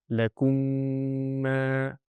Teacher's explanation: So when I'm going in a flow of recitation I have to say the whole thing properly and merge the two memes. The correct pronunciation will be and that nasal sound will be produced.